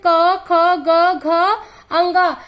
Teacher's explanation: जैसे क वर्ग में 5 व्यंजन क, ख, ग, घ, अंग। इसे कंठ ध्वनि कहते हैं क्योंकि इसका उच्चारण करते समय हमें ऐसा महसूस होता है जैसे ये हमारे कंठ से निकल रहा है।